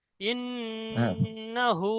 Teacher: ইন্না এখানে নুন তাসদিদ গুন্না করতে হবে, গুন্না ওয়াজিব।